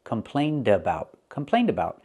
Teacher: Now we're linking complain with a vowel, so you hear the d sound. The d sound is very important. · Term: Link the sounds